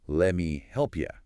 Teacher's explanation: It becomes a lemmy. And notice you at the end often reduces to ya.